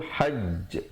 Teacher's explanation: Baik, asalnya sabdu berbaris bawah. Tetapi bila kita waqaf, kita berikan tanda mati mendatang di situ, hajj. Kita tahankan sekejap baru lepas. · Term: qalqalah akbar